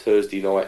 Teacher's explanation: Another thing there is he says he uses f for think and so on, but he has th on Thursday. I think he says Thursday the first time and Thursday the second time.